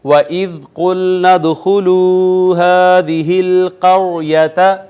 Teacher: وَإِذْ قُلْنَا ادْخُلُوا هَٰذِهِ الْقَرْيَةَ، ناظرین دیکھیں قاف حروف مستعلیہ میں سے پر کر کے پڑھنا ہے، دال ساکن آئی ہے، اس پہ قلقلہ کرنا ہے، یہ واو مدہ، یہ الف المدیہ الصغیرہ، اور را کا ما قبل مفتوح ہے، خود ساکن ہے را، یہاں را کو مفخم یعنی پر کر کے پڑھیں گے۔